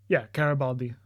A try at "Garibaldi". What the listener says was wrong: There's no D.